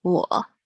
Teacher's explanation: your tone should dip to down, so go down to the bottom of your vocal tone, so vocal range, and then up again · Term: third tone